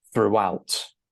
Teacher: So this is pronounced throughout. And you can hear that there's a little bit of an intrusive W sound between the pronunciation of through, which is exactly the same as this one, and out, okay?